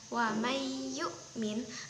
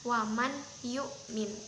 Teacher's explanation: Karena ini itu huruf idgham bihunah, di mana nun sukun bertemu dengan ya, maka nunnya itu secara tidak langsung tidak usah dibaca, lalu dimasukkan langsung ke dalam ya. Cara membacanya yaitu ada diberi tekanan sedikit kepada huruf setelah nunnya, seperti contoh ini yaitu wa may yu'min, dibacanya wa may yu'min bukan wa man yu'min.